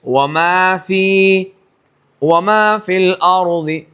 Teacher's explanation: لیکن اب جب یہاں رکیں گے وما فی الارض, وقف کریں گے تو حرف مد ادا ہوگا, اور وقف نہیں کریں گے, وصل کریں گے تو حرف مد ادا نہیں ہوگا.